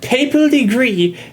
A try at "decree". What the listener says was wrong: Decree, not degree.